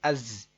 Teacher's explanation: یہ آواز ہلکی سی آنی چاہیے سیٹی کی